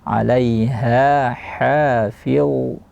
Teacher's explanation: Alaiha makhrajnya di pangkal tenggorokan, aqsal halqi